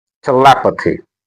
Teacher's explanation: the stress is on le. And that's why le has to be made prominent. It should be louder as compared to the other sounds on both sides of this word.